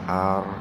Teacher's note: Kalau ada lam sukun atau ro sukun didahului kasroh, maka dibacanya tipis tarkik. Kalau didahului fathah atau doma, dibacanya tebal atau tabhim.